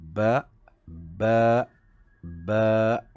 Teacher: Huruf ba hendaklah dicantumkan kedua bibir, sebab huruf ba ni adalah huruf-huruf bibir, syafatain